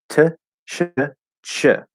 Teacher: CH starts in the T and then you push an SH through it. and it creates a CH.